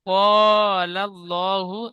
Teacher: আল্লাহ শব্দের ডানদিকে জবার এসেছে। তাই আল্লাহর লামকে পুর অর্থাৎ ল পড়তে হবে।